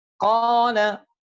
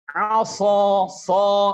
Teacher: Qala, sa, beda. Qa tebal, sa lebih tebal lagi. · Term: itbaq